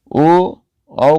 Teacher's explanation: ओ औ का उच्चारण स्थान कंठ और ओठ दोनों से मिलकर होता है, इसलिए इन्हें कंठोष्ठ वर्ण कहते हैं।